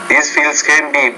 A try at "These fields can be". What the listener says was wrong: But make that longer.